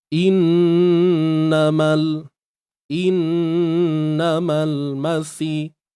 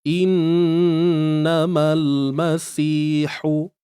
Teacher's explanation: Nun bersabdu tuan-puan, kita kena dengung dia. Wajib dengung, 2 harakat je kadar. Dengung sempurna biar sampai ke pangkal hidung.